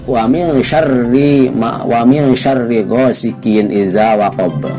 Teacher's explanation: Wa min syarri ghasikin itu dibacanya harus panjang karena termasuk mad tabi'i